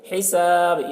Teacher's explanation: یہاں پر وقف کریں گے تو با میں قلقلہ کریں گے